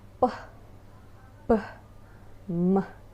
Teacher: Bilabial sounds are produced with both lips like p, b, m.